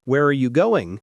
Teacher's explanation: if you ask an information question like where are you going your voice falls at the end